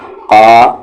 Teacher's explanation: قاف کو اب ہیوی کریں گے، یہ قاف ہیوی ہے